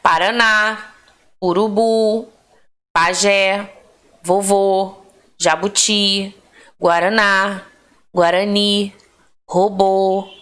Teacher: as palavras cuja acentuação tônica recai na última sílaba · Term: oxítonas